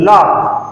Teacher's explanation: जब हम ला बोलते हैं तो जीभ के बगल से हवा निकलती है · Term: पार्श्विक